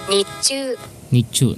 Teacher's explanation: chi is a consonant doubler, so we must put a stress on that ch of chu